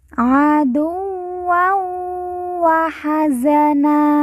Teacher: dua harakat dan didengungkan dan Alif tidak dibaca aduw WA Hazana nan di ujung karena wakaf atau berhenti kita baca Na dan dibaca panjang dua harakat